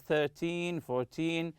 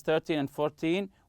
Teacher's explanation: we stress the first syllable when we are counting